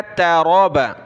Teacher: باریک تا ہے، را کو موٹا کیا، تراب۔ لام کو نون کے ساتھ ملانا ہے، غنہ ہوگا، نون کے اوپر تشدید ہے۔